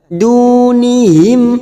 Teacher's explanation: mim sukun bertemu ha, kita baca jelas tanpa mendengung, namanya bacaan idhar safawi